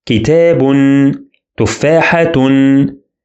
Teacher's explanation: And because these 2 words are indefinite, we see 2 dhammas, not only 1. This is called tanween. And it is pronounced as a consonant na sound.